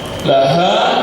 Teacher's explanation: Laha bergetar dadanya, ha besar